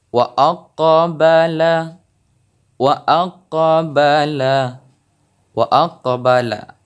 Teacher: Jadi pantulan dari qalqalah sughra ini yaitu pantulan yang hanya sedikit saja. Jadi bukan pantulan yang besar di saat kita membacanya.